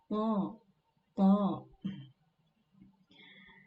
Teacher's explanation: Syaitani cukup dibuka saja ke bawah, tapi bunyinya menjadi tebal karena huruf ta ini termasuk ke dalam huruf yang tebal. Isti'la, pangkal lidah juga terangkat ke atas.